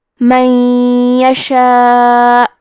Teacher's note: بید اللہ، کلمت من کے آخری میں نون ساکن ہے، پھر حرف الیا ہے کلمت یشاء، یا حروف الادغام بغنہ میں سے ہے، تو ہم یہ حکم کو غنہ اور تشدید کے ساتھ ادا کریں گے۔